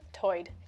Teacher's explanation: Lumbee English speakers share vowel sounds present in the Outer Banks accent, where tide is pronounced toid